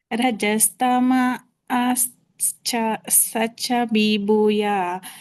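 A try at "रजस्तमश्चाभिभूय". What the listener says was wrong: ಮ ಕ್ಕೆ ಒತ್ತು ಕೊಡಬೇಕು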